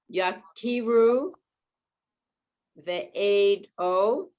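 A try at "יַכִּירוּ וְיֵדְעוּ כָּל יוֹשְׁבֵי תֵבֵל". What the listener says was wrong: There's a yud there. The yud has a sound.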